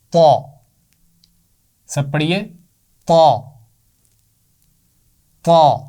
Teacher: تو طا کی آواز موٹی ہے، اس کا مخرج بھی وہی ہے جو تا کا ہے۔